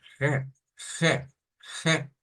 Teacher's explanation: gutural se le dice er gutural porque proviene de la garganta es algo que vamos a vibrar en nuestra garganta para sonar una r